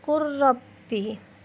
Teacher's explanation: Yang kelima, lafaz qul rabbi, maka lamnya lebur menjadi huruf ra menjadi qur rabbi.